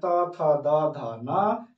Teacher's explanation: द के समूह में जितना भी वर्ण है, त थ द ध न, ये सभी दंत से आता है।